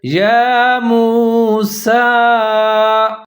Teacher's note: سین کے اوپر کھڑا زبر ہے۔ اس کو تھوڑا سا لمبا کر کے پڑھیں گے